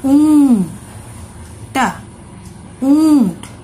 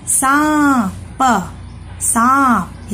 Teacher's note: जब हम इस चंद्रबिंदु लगे हुए शब्दों का उच्चारण करते हैं, तब जो आवाज निकलती है वह हमारे मुंह और नाक दोनों से निकलती है।